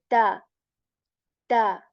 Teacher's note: tip of the tongue touches the root of our upper teeth